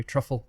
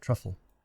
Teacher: two syllables the second one is extra short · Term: unstressed syllable